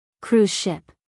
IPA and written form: kruːz ʃɪp (cruise ship)